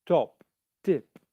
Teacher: it's clearly not a d sound but it's not a clear voiceless t either so in your language you may make the t sound voiced